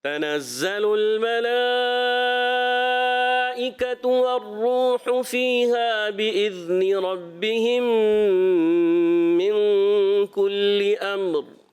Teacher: میم کو ساکن کر کے پھر را کو کلیئر کرنا ہے، را کو پر کرنا ہے